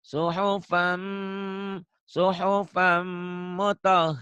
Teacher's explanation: suhufam ditahan ya dengung ada dengungnya